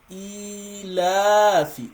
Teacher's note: So e, and I mentioned earlier, so this ya here, when it's having no vowel sound, not short vowel sound, it's not having any short vowel sound, it's going to elongate the letter for 2 counts